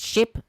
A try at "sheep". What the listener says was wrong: You said ship.